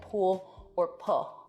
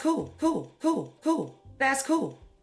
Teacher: an L turning into a vowel in a word like pool or pull might sound something like pool or pull. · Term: L vocalization